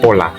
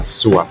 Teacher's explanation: suku kata ponem P pe misalnya dapat mempunyai dua macam lafal bila berada di awal kata ponem itu dilafalkan secara lepas seperti pada kata pola bila berada di akhir kata tidak diucapkan secara lepas